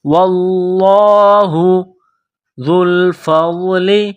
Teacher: ذال کو نرم کرنا ہے، زبان تھوڑی سی باہر نکالیں گے ، ذال کو پڑھتے وقت ذال کو لام کے ساتھ ملانا